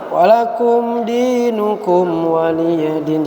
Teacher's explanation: Jadi mim sukun bertemu waw itu dengung enggak dia? Enggak dengung, maka enggak boleh dengung.